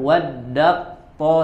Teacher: Contoh misalkan tadi ya pada kata waddat ta'ifatun ya, ada dalam Al-Qur'an waddat to, sebetulnya di situ ada huruf ta waddat ya, tapi setelahnya ada huruf to ya, maka langsung diidghamkan waddat to, langsung tebal, taknya tidak dibaca ya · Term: idgham kamil